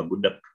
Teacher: Huruf K itu bunyinya k, k, k. Ya, dalam bahasa Indonesia, kemungkinan bunyi huruf G di belakang, kita akan bunyikan K